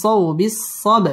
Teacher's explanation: বা কলকলার হরফ ধাক্কা দিয়ে পড়তে হবে